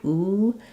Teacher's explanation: for the ooh my lips are more pursed my tongue is higher it's a high back sound